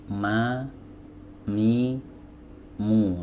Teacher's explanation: dia keluar dari dua bibir ya bibir atas dipertemukan dengan bibir bawah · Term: huruf Mim